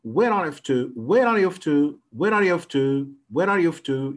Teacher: يعني بيبدأ بالعالي وبعدين بعد كده بينخفض، خلاص بينخفض في الآخر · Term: falling intonation